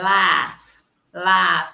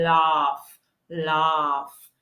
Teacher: americans would say it a little bit different they say laugh laugh they have the ah sound